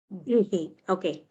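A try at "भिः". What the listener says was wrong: No, not bihi. You are still saying bihi. Ba is alpa prana. Ba you aspirate with more force. Bha. Bhihi.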